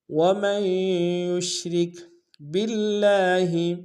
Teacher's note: با کو لفظ اللہ کے لام کے ساتھ ملانا ہے، تشدید زور دیں گے، لام کے اوپر کھڑا زبر ایک انتظار میں کھینچیں گے۔ · را کو کاف کے ساتھ ملائیں گے، را کو باریک ادا کریں گے